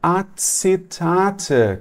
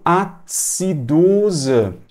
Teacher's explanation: a pronúncia como um TS Ou seja quando eu tenho as vogais e e a vogal I